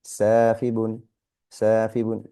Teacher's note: the a sound followed by an alif, means we have to elongate the sound. We have sa, and then we have fibun, safibun, safibun.